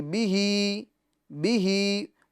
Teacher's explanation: با کو ہمیں نہیں کھینچنا ہے، ہاں کو کھینچنا ہے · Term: کھڑی حرکات